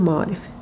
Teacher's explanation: istisnasız istisna olmadan Azərbaycan dilində eyni cizli qoşa saitli sözlər yanaşı gələndə tələffüz zamanı saitlərdən biri düşür, digəri isə uzun tələffüz olunur